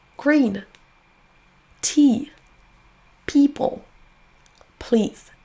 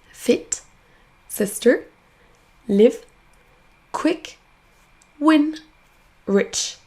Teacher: non seulement je vais sourire et ouvrir plus la bouche que pour un court mais en plus la voyelle va traîner un petit peu en longueur